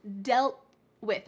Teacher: Make sure your tongue is at the top of your mouth. We're not cutting out the T completely. We just need to stop the T sound. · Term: stopped T sound